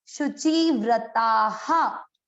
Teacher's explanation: विसर्ग का उच्चारण इसके लास्ट वाले अक्षर की मात्रा पर, इसमें आ की मात्रा है तो इसको पढ़ेंगे हा